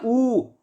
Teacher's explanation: जो हमारा ऊ है वो हमारा पश्च स्वर भी है और हमारा समृत स्वर भी है